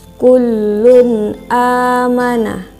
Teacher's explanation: izhar sebab huruf lam berharokat bom mah tanwin bertemu huruf hamzah dibaca jelas tidak berdengung sama sekali